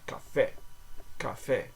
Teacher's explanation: in French, each vowel in the words rosé, café, and entrée is pronounced with a single pure sound